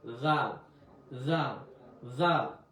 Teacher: জিম জা জিম জা জিম জা জিম জা এরপর আসেন জাল জাল হল জিব্বার আগা থেকে একটু এই সফটভাবে হবে